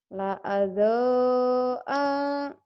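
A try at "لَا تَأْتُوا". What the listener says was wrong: La alta, hanya pendek. La alta, gitu.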